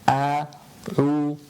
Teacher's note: a from the bottom of the throat, ayn from the middle of the throat, and making sure you upper jaw going up.